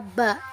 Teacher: Dalam bahasa Arab dibaca ba, dalam bahasa Indonesia dibaca b. Keterangannya bilabial, hambat, dan bersuara.